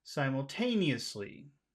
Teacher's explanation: we'll give this a high tone but this is the end of our phrase so we want to finish in a low way